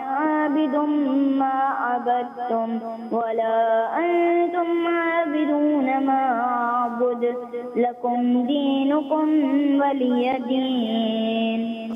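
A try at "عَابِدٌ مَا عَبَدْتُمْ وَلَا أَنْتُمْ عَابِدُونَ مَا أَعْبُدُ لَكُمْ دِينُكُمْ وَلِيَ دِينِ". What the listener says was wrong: کہیں چھوٹی مسٹیک جیسے غنہ وغیرہ کہیں چھوڑ دیا, کہیں کر لیا, اسی طرح کہیں مد کی کہیں چھوڑ دی, تو ان کو فالو کریں. اور اعبد جیسے نشاندہی کی گئی تھی, اس کو آخر میں جا کر تھوڑا سا انہوں نے پڑھنے میں تھوڑا سا مسٹیک ہوئی, ورنہ ماشاءاللہ اوورآل اچھا پڑھا انہوں نے.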